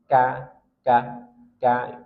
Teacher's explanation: Kalau qof dia tafkhim tebal, kalau kaf tipis. · pangkal lidah, dan agak ke depan daripada makhraj huruf qaf. Kalau qaf pangkal lidah qa, ini dia ka, dan dia tarkik tipis, beda dengan qaf. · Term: huruf kaf